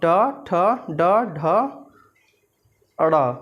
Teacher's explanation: मूर्धा और जीभ के स्पर्श से बोले जाने वाले वर्ण, जो हमारी जीभ है वो मूर्धा को स्पर्श करती है तब यह इन वर्णों का उच्चारण होता है। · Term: मूर्धन्य